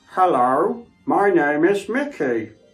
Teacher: So I very much speak from down here and I push my voice to the back of my throat, and it gives me that kind of deep, different tonality to the voice. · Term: throat voice